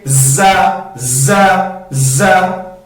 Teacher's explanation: اس میں ایک قسم کی سختی پائی جاتی ہے، ایک قسم کی سیٹی اس میں پائی جاتی ہے. سیٹی اس طرح بھی، اور اس کو ہم سختی بھی کہیں گے زا، زا، زا.